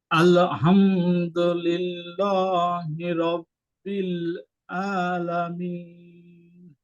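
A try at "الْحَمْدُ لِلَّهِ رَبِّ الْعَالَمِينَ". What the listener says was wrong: আল হামদু, এই হাটা গলাটা চেপে পড়তে হবে, এটা হয় নাই ঠিক। লিল্লাহি বলেছেন, লিল্লাহি বলতে হবে। লা, লয় আকারে লা, এমন উচ্চারণ হবে এখানে।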